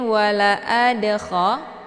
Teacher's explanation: Ini dinamakan dengan qalqalaf sughra. Cara bacanya, dalnya dipantulkan dengan pantulan ringan. Wala adakha, keluar bunyi de.